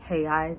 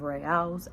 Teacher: instead of it being a R sound that we're used to, it's a H sound. So reais instead of reals, and Rio de Janeiro instead of Rio de Janeiro.